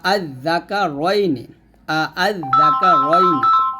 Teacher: দ্বিতীয় হামজাকে হামজা এবং আলিফের মাঝামাঝি উচ্চারণ করাকে তাসসিল বলে